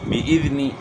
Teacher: ذال کو اپنے مخرج سے ادا کرنا ہے، زا سے چینج نہ ہو جائے